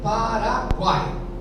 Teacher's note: a tônica tá na última sílaba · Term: oxítona